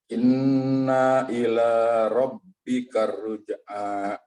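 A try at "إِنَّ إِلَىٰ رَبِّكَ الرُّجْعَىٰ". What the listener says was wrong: Baik, mohon untuk tidak dipanjangkan. Inna ila, langsung masuk. Karena itu akan membedakan arti. Jadi inna ini memang ada yang panjang. Inna, kalau dipanjangkan nanya berarti sesungguhnya kami. Kalau tanpa panjang seperti ini sesungguhnya aja.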